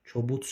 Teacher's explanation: Kobud sözündə d t kimi tələffüz olunur.